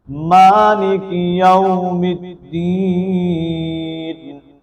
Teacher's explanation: مالکی میم کے اوپر کھڑی زبر ہونے کی وجہ سے اس کو ہم ایک الف کے مطابق لمبا کریں گے